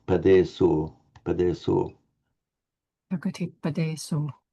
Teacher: you were shortening the E and the O. They both have their full length.